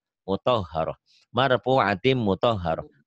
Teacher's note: Karena mungkin kebiasaan kau bacanya mutahharah padahal muto ya, o, mutahharah. Memang di Arab itu tidak ada huruf o, tapi ini namanya taglid, tebel.